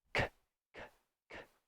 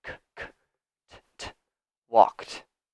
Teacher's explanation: So I have the verb here, to walk. The final sound is a K. K, k, k. No vibration. So even though the spelling is W-A-L-K-E-D, the pronunciation is not walked.